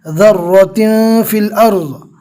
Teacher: मिस्क़ालि ज़र्रा, रो को पूर पढ़ेंगे